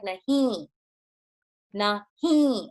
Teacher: So when you write, in Hindi, when you say it, it's may, it's kind of like a nasal ending to the word, but there's no equivalent in English.